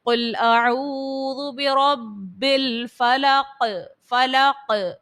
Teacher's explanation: قوف حرف قلقلہ کا ہے تو اس بات کا خیال رکھیے گا، اور با بھی حرف قلقلہ میں سے، لیکن یہاں پر تشدید ہے اس لیے جماؤں کے ساتھ ادا کیا